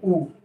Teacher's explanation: वृत्तमुखी मतलब जिन स्वरों का उच्चारण करते समय हमारे होंठ क्या हो जाते हैं, गोलाकार हो जाते हैं